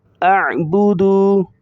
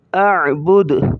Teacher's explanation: حمزہ عین زبر اع، با پیش بو، اعبو، دال پیش دو، اعبدو، وقفاً اعبد، وقفاً اعبد۔ دال کی پیش کو ظاہر نہیں کریں گے اسٹاپ کے وقت